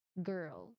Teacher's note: you try to block the air with the back tongue and speak immediately. Your voice here must start before the air is fully released.